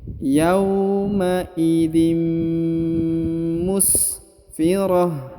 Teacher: Huruf tanwin in bertemu dengan mim bertasdid ya, harokat tanwin bertemu dengan mim, maka tanwinnya masuk dan melebur ke huruf mim ya, dan seakan-akan menyebut huruf mim